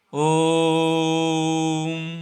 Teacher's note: ओ को 3 गुना समय में बोला जाता है, ओ को 3 गुना समय में बोला जाता है। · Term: प्लुत स्वर